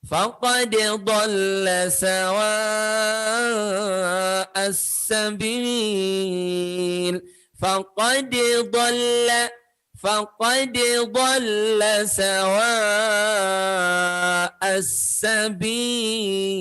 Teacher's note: Jadi tetap idhar. Faqad, idharnya kol-kolahnya dengan cara memantulkan.